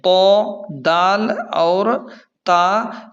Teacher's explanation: یہ تینوں دانتوں کی جڑ سے ادا ہوتے ہیں